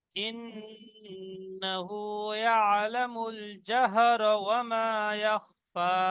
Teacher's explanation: ইন্নাহু এখানে নুন তাসদীদ গুন্না ওয়াজিব